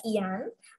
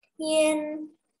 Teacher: Untuk IAN, kita tidak membaca ian, melainkan dibacanya yen. Jadi seakan ada E-nya.